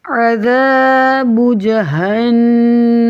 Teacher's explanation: نون مشدد ہے تو مشدد ہمیشہ غنہ کیا جاتا ہے. ناک میں آواز گنگنی سی ٹھہرائی جاتی ہے